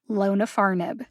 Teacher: name for zokinvi is lona farnib it has four syllables lonafarnib the first syllable lo gets the secondary emphasis the third syllable far gets the primary emphasis